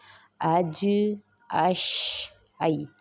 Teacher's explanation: یہ وہ حروف ہیں جو زبان کے درمیانی حصہ جب اوپر کے سخت تالو سے لگے گا تب ادا ہوں گے